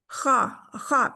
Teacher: जो हल्क का जो आपका गला है उसका आखिरी हिस्सा जो मुंह की जानिब है उससे ये ख अदा होता है और मोटा है